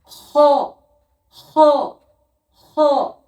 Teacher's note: হ উচ্চারণ হয় গলার শেষ অংশ থেকে, এইখান থেকে ঘটি বার হবে।